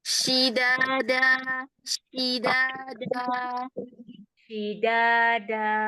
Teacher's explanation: Ya, huruf shinnya yang masih meleset ya. Jadi huruf shinnya harus di tengah lidah. Nggak boleh di bagian ujung.